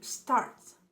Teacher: starting s before a consonant and assumes the sound of a sh